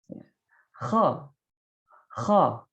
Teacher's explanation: Getaran yang terjadi itu adalah pada tenggorokan bagian atas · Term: tenggorokan atas, huruf kha